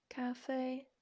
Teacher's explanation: first tone demonstrated by a straight line and that is because it is a flat tone sometimes people describe it as like singing flat singing doesn't undulate it doesn't go up it doesn't go down so it's kind